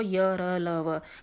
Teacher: य, र, ल, व का उच्चारण करते समय बीच की स्थिति रहती है, ना स्वर पूरी तरह से हैं ये, ना पूर्णतः ये व्यंजन है, इसलिए इन्हें अंतस्थ बोलते हैं।